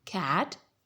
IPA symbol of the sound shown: æ